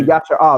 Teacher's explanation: So they'll say Yasher Al, they'll just omit the A at the end